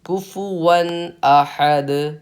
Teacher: اب دونوں کی جب ہم انگلش میں اسپیلنگ دیکھیں گے تو دونوں میں نون آ رہا ہے، لیکن تنوین میں نون ہڈن ہے۔ وہ جو تنوین میں نون ہڈن ہے نا، اسی کو ہم ظاہر کر کے پڑھیں گے